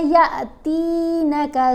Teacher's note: یا کو لمبا نہیں کریں گے، یا کو جھٹکا دے کر پڑھیں گے. یہاں سا یا پڑھا جائے گا، ایک زبر پڑھی جائے گی.